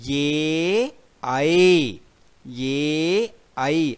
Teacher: ఏ ఐ అనే రెండు అక్షరాలు కూడా చదివేటప్పుడు గొంతు నుండి వచ్చి దవడల యొక్క సహాయంతో సౌండ్ అనేది బయటకు వస్తుంది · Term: కంఠ్య తాలవ్యములు